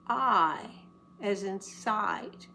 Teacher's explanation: And the long I is the most open, I as in side.